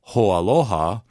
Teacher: And because you have an a Hawaiian a at the end of hoa, and a Hawaiian a at the beginning of aloha, when you put them together, there's no break